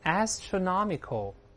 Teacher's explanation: 注意第一个字母要咧开嘴发▁a，▁然后▁not▁是重读的 ，大声念▁astronomical。第一是次重音，这个▁not▁是最重